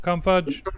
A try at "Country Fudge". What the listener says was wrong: Country Fudge, not Cum Fudge.